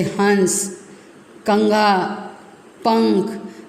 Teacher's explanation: इसका उच्चारण करते समय हवा नाक से निकलती है, जैसे हंस, कंगा, पंख। देखिए आपको जो ऊपर अनुस्वार लगा है तो आपको थोड़ा सा नाक से भी आवाज़ आती है।